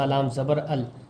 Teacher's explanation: یہاں لام پر ساکن بنا ہوا ہے، اس لیے حمزہ کو لام میں ملا رہے ہیں